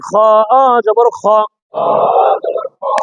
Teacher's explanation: এটা গলার ভিতর খরখর আওয়াজ হবে